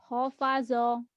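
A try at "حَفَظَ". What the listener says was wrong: hafazo, nggak ada titiknya non. Hafazo, kalau ada titiknya baru ho ya.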